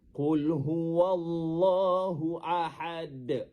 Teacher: Dengar huruf dal tu ahad. Kita pantulkan bunyi dal tu dengan pantulan yang yang besar. Kerana pada ketika itu berlaku qalqalah kubra.